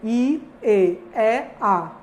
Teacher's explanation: Há uma gradativa abertura da mandíbula.